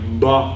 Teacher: a voiced plosive would be something like ba, with, you know, that voicing before the plosive during the closure of the plosive